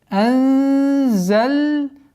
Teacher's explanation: Ихфа мягкая, потому что звук зай, мягкий звук, а ихфа подчиняется последующему звуку. Итак, получается анзальнаху.